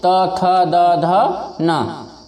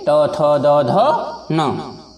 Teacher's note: त थ द ध न, ये आपकी जीवा आपके दांतों को स्पर्श करेगी